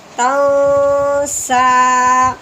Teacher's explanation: تانون زبر تاؤ، سین کھڑی زبر سا، تاؤ سا، وقف کی صورت میں تاؤ سا، بس ہم نے لہجہ تھوڑا سا نیچے لے کے آنا ہے کہ ہمیں پتہ ہو کہ یہاں پہ وقف ہو گیا ہے